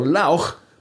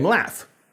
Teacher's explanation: Sometimes it changed to an F, making the preceding vowel shorter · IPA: /laf/